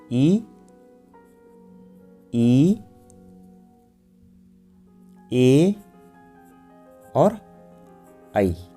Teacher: अगर आप इनका सही उच्चारण करेंगे तो आपको लगेगा जो जीभ का आगे वाला भाग है वह ऊपर की ओर उठ रहा है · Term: अग्रस्वर